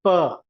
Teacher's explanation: मैंने हवा को दोनों होंठ से रोका और उसको छोड़ा, और मैंने ये साउंड प्रोड्यूस किया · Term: स्टॉप कॉन्सोनेंट्स